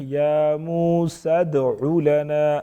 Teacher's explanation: دال کو پراپر وضاحت کے ساتھ ادا کریں گے. آواز میں تھوڑی سی جنبش پیدا ہوگی. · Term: قلقلہ